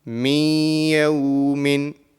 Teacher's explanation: we have to conceal the sound of noon sakin into our nose for 2 seconds, and that is the nasal sound. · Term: idgham naqis